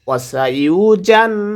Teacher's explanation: আতকা ওয়াসাইউজান এখানে গুণনা করব কারণ নুনের উপরে তাসদিদ এসেছে। ওয়াসাইউজান জিমটা জিব্বার মধ্যখান তার বরাবর উপরে তালুর সঙ্গে লাগায়ে উচ্চারিত হয়।